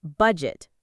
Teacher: the stress is on the first part, budget, not budget.